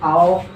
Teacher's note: इसमें हमारा जो है होठ का शेप जो है कैसा हो जाता है, एक सर्कल की तरह हो जाता है